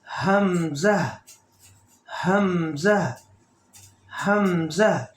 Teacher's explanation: حمزہ اور ہا یہ دونوں اس حلق سے جو سینے کی طرف ہے یہاں سے نکلیں گے، یعنی جس کو اقصی حلق کہتے ہیں، بوٹم، چست کی طرف.